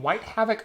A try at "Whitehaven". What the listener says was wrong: Whitehaven. White Havoc is what you said. You were close. Because it says Haven OC, so you probably saw Havoc.